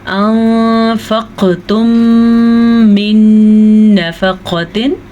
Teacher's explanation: नून साकिन के बाद फ़ा हुरूफ़ इख्फ़ा में से है, तो नून साकिन को हम छुपे हुए गुन्ने के साथ पढ़ेंगे